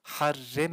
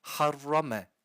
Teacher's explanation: Harem gibi ince yapmıyoruz e sesi değil a sesi verip harrame kalın yapıyoruz